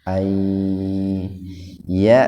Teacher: Nun mati idgham bi gunnah. Nun mati ketemu dengan ya. Jadi membacanya dimasukkan ke huruf ya dengan mendengung.